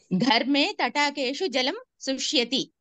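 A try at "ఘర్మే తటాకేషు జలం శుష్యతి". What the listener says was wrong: మాకు ధా వినపడి ధా ధా అని వినపడుతోంది.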